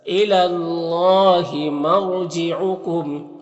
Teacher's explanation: یہاں پر را ساکن سے پہلے میم کے اوپر زبر ہے تو را کو پر پڑھیں گے